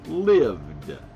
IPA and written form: lɪvd (lived)